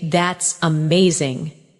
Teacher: When you say that's amazing, your tone rises with excitement. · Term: Intonation, intonation